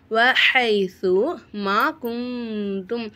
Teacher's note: இப்போ நம்ம இங்கே என்ன செய்யணும், எஹுஃபாவுடைய சட்டத்தை ஃபாலோ பண்ணிக்கணும். குந்தும் நூனை சக்கினை குன்னா செஞ்சு ஓதணும்.